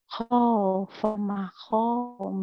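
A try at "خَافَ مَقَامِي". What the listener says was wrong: Makom, bukan ma, ho, makom. Makom, makom. Kita ke makom. Makom, makam, makom, makom. Jangan ma, ho, ya. Koknya sering ke ho, bukan. Ini mako, mako mi. Baju koko, saya bilang kok.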